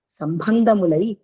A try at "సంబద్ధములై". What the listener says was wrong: సంబద్ధము సంబద్ధము సంబంధం కాదు, సంబద్ధము బద్ధము సంబద్ధం అంటుకునే, బద్ధం అంటే అంటుకొని ఉండడం అనమాట. సంబంధం అంటే దూరం దూరం సంబంధం. ఇది బద్ధము, బద్ధం అంటే అంటుకునే ఉండము, అతుకునే ఉంటాయి అనమాట. బద్ధం సరిగా బద్ధమై ఉంటాయి.